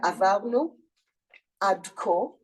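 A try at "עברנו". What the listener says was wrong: the R, you're pronouncing it as a V, but how do you want it as a D?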